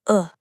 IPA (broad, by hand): ʊ